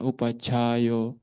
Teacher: upacayo itu harus jelas mengeluarkan angin